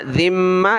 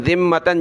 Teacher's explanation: ज़ाल पर ज़बान निकालें, इसको मीम के साथ मिलाएंगे, यहाँ गुन्ना करेंगे। ज़ाल मीम ज़ेर ज़िम, मीम ज़बर मा, ज़िम्मा ता दो ज़बर तन, ज़िम्मतन।